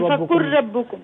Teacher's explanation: اور ربکم میں جو میم ہے نا اس پر غنہ نہیں کرنا